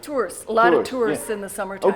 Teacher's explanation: she pretty much dropped the schwa altogether. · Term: weak vowel merger